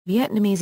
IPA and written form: ˌviɛtnəˈmiːz (Vietnamese)